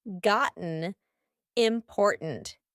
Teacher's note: my throat is doing some important work here to make that glottal T sound